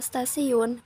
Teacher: kata stasiun bunyi t itu dilafalkan sebagai bunyi teh lamio alveolar perubahan bunyi hambat apiko alveolar T menjadi Bunyi hambat laminoalveolar adalah karena pengaruh secara progresif dari bunyi geseran lamino palatal esc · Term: asimilasi progresif